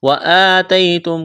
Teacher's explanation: کڑا زبر ایک الف کے برابر کھینچنا ہے، یا لین ہے بغیر کھینچ کے پڑھیں گے